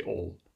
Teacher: In Hawaiian Creole, you drop that final stop and just say pain. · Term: deletion